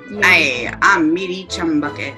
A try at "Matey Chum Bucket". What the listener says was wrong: Not Meaty, Matey. It sounded like meaty.